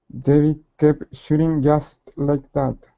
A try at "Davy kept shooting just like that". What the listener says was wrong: Good. One more time.